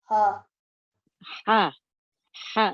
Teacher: produced from the middle of the throat. Air escapes slightly. It is a sharp release of air. One of the 6 letters of the throat.